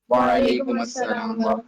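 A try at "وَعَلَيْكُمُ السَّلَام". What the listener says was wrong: Okay, it is وعلیکم السلام. میم پہ دمہ ہے, پیش ہے. میم کے اوپر آپ نے زبر یا فتحہ نہیں پڑھنا, میم کے اوپر ہمیشہ دمہ پڑھنا ہے.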